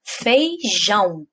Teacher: Jão é a sílaba mais forte, então ela é a sílaba tônica e ela está no final, ela é a última. Então, nós falamos que essa palavra é oxítona.